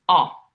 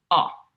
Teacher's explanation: In Italian, the O stays open, so it's O. Our mouth doesn't close into that W.